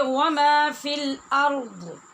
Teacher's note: اور اگر یہاں رکنا چاہیں گے تو پھر پڑھیں گے وما فی الارض. را اور ضاد دونوں ساکن ہو جائیں گے